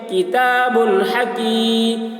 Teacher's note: या साकिन से पहले ज़ेर है, या मद्दा हुआ, इसलिए या मद्दा को एक अलिफ के बराबर खींच कर पढ़ेंगे